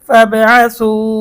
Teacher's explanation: এখানে আমরা 3 আলিফ টানবো এবং এটা হচ্ছে মধ্যে মুনফাসিল। আমরা একটু লক্ষ্য করি এখানে মদের হরফ পেশের পরে ওয়াও সাকিন মদের হরফের পরেই পৃথক শব্দে হামজা আসছে, লম্বা হামজা।